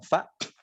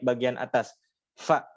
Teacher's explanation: ujung gigi seri atas nempel di bibir bawah bagian dalam